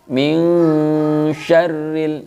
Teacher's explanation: Nunnya di sini dibaca setengah, pas kita baca min, ya, mulut sudah siap melafadzkan huruf shin. Ya, jadi seolah-olah terdengar eng, ya, tetapi itu bukan eng murni, ya. · nun sukun ketemu dengan Shin disebut dengan Ikhfa Haqiqi dibaca dengan samar-samar lantas Berapa panjang harokatnya banyak harokatnya adalah dua harokat ming-ming syarril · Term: ikhfa hakiki